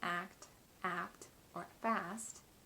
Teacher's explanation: when it comes after other sounds like k p or s as in act act or fast the t is released in a puff of breath